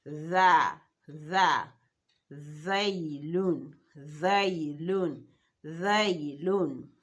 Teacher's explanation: As if you're trying to pronounce z, but your tongue comes out in between your upper teeth and lower teeth.